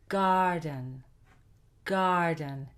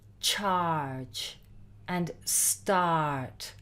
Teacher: Now, this is going to vary a little bit between American and UK English because the Americans will produce some words as R with the sound, and the English, when there is an AR in the word, will not pronounce the R sound